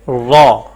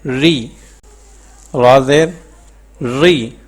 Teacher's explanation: جیسے را مفتوح ہو تو پر اور مکسور ہو تو باریک پڑھی جاتی ہے، یعنی را کے نیچے زیر ہو تو وہ ہم باریک پڑھتے ہیں، اور اوپر زبر اور پیش ہو تو اس کو پر پڑھتے ہیں۔